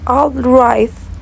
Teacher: For example, in the word outright, the t at the end of right is not clearly heard because there is not a strong burst of air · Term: No audible